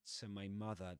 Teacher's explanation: Then the preposition to is pronounced with a schwa, right?